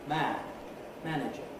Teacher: The man bit in manager is audibly shorter than the man bit on its own.